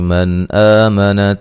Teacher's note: من آمنا نون ساکن کا یہاں اظہار ہے، غنہ نہیں کریں گے